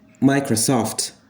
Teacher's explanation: You have this dual stress in this word. The stress falls on the first syllable a bit, micro, and soft as well.